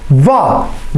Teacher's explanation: वाह बोलेंगे तो ऊपर के दांतों ने नीचे के ओठ को दबाया। तो वाह का उच्चारण करते समय हमारे किन दो वर्णों का प्रयोग हुआ, किन दो अंगों का प्रयोग हुआ, दंत का और ओष्ठ का। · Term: दंतोष्ठ ध्वनि